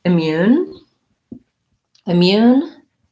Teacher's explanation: immune has second syllable stress has a lack if vowel and mu mu has the glide